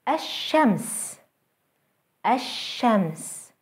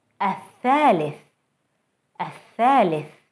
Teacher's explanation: Notice how the sun letter is doubled and how the L sound is lost.